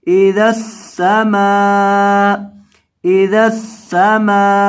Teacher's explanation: मीम के बाद यहाँ अलिफ है, मीम को लंबा करके पढ़ेंगे, मीम जबर अलिफ मा, इदस्समा, इदस्समा।